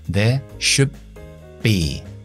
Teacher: ¿Qué pasa con la D de should? Lo cambio a una B. Esto se llama asimilación fonética. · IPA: /ðeə ʃʊbbi/